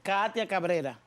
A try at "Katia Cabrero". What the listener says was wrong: Cabrero. Con O.